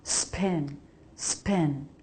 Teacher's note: Careful with the P not to put too much air in it. Some people want to put a lot of air in, making almost an extra H sound.